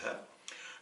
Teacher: le ha, c'est le ha de l'expiration qui n'a rien à voir avec le ha qui ressemble au jim, au kha